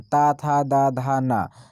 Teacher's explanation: ता, था, दा, धा, ना, तो ये सब क्या है, दंत व्यंजन है,